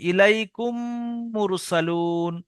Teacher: মিম সাকিনের পরে যদি মিম আসে তাহলে মিমকে মিমের সঙ্গে মিলিয়ে এক আলিফ গুন্না করতে হবে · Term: ইদগামে সাফাবি